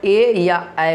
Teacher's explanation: कंठ और तालु इन दोनों का सहारा लेना पड़ता है, तब हम लोग ए या ऐ बोलते हैं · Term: कंठा तालव्य